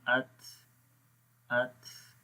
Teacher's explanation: تا کے اندر صفت ہمس ہے جس میں سانس جاری رہتا ہے